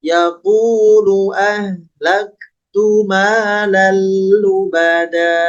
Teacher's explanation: Nah ini disebutnya mad iwad, ditandai dengan adanya tanwin fathah bertemu dengan alif kemudian diwakof atau diberhentikan, maka yang tadinya lubadan ketika berhenti pada kalimat ini menjadi lubada, panjangnya 2 harokat saja.